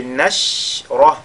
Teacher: Si alam nashrah, au mimoussa qui est suivi de la lettre Nun, on fait al-idhar al-shafawi et nashrah. La lettre Ra est avec tafkhim. Il ne faudrait pas que le shin soit également le tafkhim.